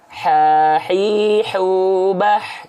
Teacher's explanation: pastikan huruf ha kecil teman-teman sekalian dilafalkan dari tepat dari tengah tenggorokan tepat dari tengah tenggorokan ya saya izin tulis tengah tengah tenggorokan